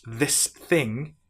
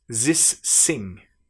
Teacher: So, a French person who's learning English might pronounce this thing as this sing.